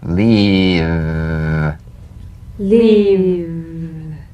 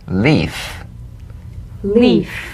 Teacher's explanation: If you don't have enough vibration in your V's, they'll end up sounding like the F because they're exactly the same.